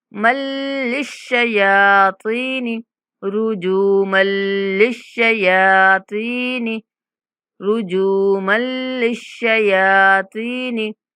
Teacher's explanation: वजअलनाहा, वजअलनाहा रुजूमल लिश्शयातीन, रुजू, जीम के बाद वाव मद्दा है और मीम को लाम के साथ मिलाते हुए बगैर गुन्ना के इदगाम करेंगे